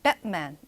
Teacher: 자, 미국식에서는 Batman 약간은 T 소리가 거의 조금 나다가 닫히는 것처럼 약간 그런 식으로 하는 경향이 있습니다.